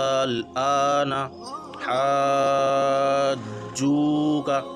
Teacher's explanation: جیم پر تشدید ہے تو اس کو ڈبل پڑھنا ہے، محسوس ہونا چاہیے کہ ہم اس کو ڈبل پڑھ رہے ہیں